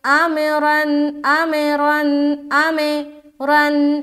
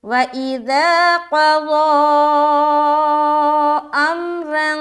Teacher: اب یہاں پر دیکھیں ایک چیز آپ دھیان میں رکھیں کہ بعض اوقات لوگ میم میں بھی قلقلہ کر رہے ہوتے ہیں جو کہ غلط ہے، یعنی کہ اگر کوئی پڑھے آمرن آمرن آمرن میں رن، یہ جو ہے نا آمے یہ جو ہے نا یہ غلط ہے، میم میں قلقلہ نہیں ہونا چاہیے۔ جب ہم حمزہ کو میم سے ملائیں گے تو ہماری آواز بالکل اسٹاپ سی ہو جائے گی، جیسے کہ ایسا، ٹھیک ہے۔